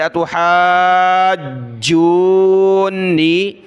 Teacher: جیم کو بھی سخت کیا تشدید کی وجہ سے